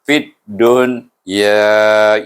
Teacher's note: Jadi baca dengan izhar mutlak, dipanggil mutlak. Itu dibaca dun, tak ada dengung, tak ada panjang.